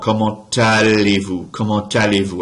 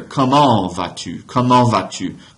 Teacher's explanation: I'm pronouncing a T that otherwise isn't pronounced right there because I'm linking the final consonant in the T of comment allez-vous right there. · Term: liaison